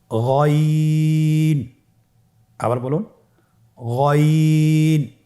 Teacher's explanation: গইন হরফটি উচ্চারিত হয় কণ্ঠনালীর শেষ ভাগ হতে।